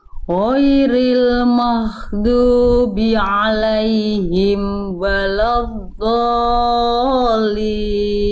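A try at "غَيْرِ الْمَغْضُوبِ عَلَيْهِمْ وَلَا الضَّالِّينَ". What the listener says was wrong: Oke, tinggal nanti Bunda sempurnakan huruf dot. Waladdallin. Oke, huruf dot nanti tinggal sempurnakan lagi makhrajnya dari pinggir lidah nempel ke gigi geraham atas. Bunda boleh pilih pinggir lidahnya yang kanan, yang kiri boleh nempel ke dinding gigi geraham atas. Kalau yang kiri dengan yang kiri, kalau yang kanan dengan yang kanan.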